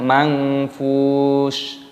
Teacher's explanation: nun sukunnya bertemu dengan fa, hukumnya dibaca ikhfa, disamarkan